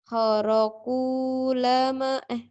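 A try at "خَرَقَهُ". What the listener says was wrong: Kharaku lahu bukan lama. Kharaku lahu.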